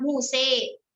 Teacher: imalah muse, condong kepada harokat kasroh. Itu ya terkait dengan pengucapan baik imalah sughra ataupun imalah kubro.